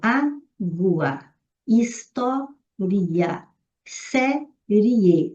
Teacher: a gramática abre a possibilidade de você transformar esse ditongo em iato